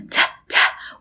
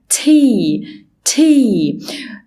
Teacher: عندي ساوند اسمه ت وده مليان هوا ت و long vowel ساوند اسمه اي ت واي فتبقى تي.